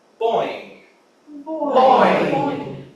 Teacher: When we say the bo at the beginning, the soft palate is generally lifted to keep the sound in the mouth, and as we go to boing, it drops.